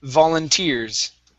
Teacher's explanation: Okay, stress at the very end.